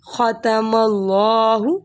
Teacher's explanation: خا کی آواز نکالیں حلق سے